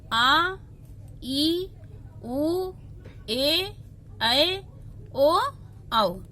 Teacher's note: इसकी संख्या 4 है, अ, ई, उ और री। दीर्घ स्वर जिन स्वरों के उच्चारण में ह्रस्व का दुगना समय लगता है उसे दीर्घ स्वर कहते हैं